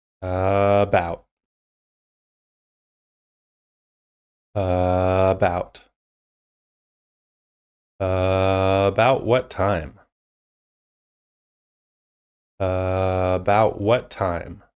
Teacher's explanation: I'm only doing that stretch on the initial vowel sound, and everything else is at a typical rate of speed.